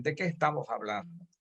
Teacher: los yucatecos, aunque somos caribeños, no aspiramos ni suprimimos la S a final de sílaba o de palabra